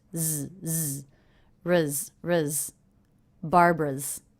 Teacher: Ruz. Also note this apostrophe S is a Z sound. That's because the sound before is voiced, so the apostrophe S is also voiced.